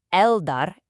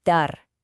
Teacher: Since D is on our sun letter list, we add the written L, but the sound totally changes. We double the D. So it's not el-dar, it's dar. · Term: sun letter pronunciation